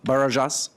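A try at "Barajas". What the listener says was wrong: it's uh baras but thank you was close the J is silent it's like an H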